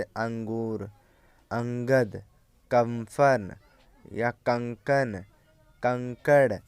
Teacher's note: यह स्वर के बाद आने वाला व्यंजन है जिसकी ध्वनि नाक से निकलती है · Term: अनुस्वार